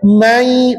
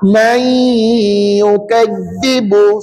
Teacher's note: Bunyi dengung lah dalam rongga hidung kita selama dua harakat. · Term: bunyi sengau